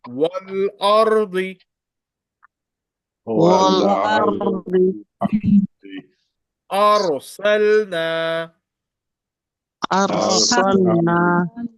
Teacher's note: When Ra Sakina preceded by Fatha, in this case, Ra will be recited as thick.